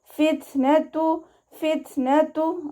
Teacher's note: വൽ ഫിത്നതു വാവ് ഉച്ചരിക്കുന്ന സമയത്ത് ചുണ്ടുകളെ സർക്കിൾ ചെയ്ത് പിടിക്കുക. ത സുക്കൂനാവുന്ന സമയത്ത് കുറച്ച് എയർ പാസ് ചെയ്യണ സൗണ്ട് കൊടുക്കുക കേട്ടോ